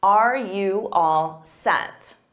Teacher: Notice that the you becomes more of an unstressed ya or ya. So it's a very subtle difference, ya, ya.